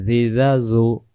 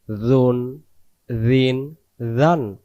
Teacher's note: জাল অক্ষরে জিহ্বার আগা থেকে নরম করে করতে হয়